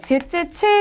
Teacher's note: 그 다음에 즈쯔츠 같은 경우에는 마찰이 생기면서 터져 나오는 소리이기 때문에 얘네들은 파찰음이라고 이야기를 해줘요